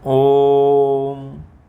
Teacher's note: प्लुत ओ का जो उच्चारण होगा वो दीर्घ से भी अधिक देर तक होगा।